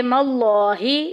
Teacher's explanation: لفظ اللہ کا لام موٹا پڑھا جائے گا، پر پڑھا جائے گا کیونکہ پیچھے زبر آ گئی۔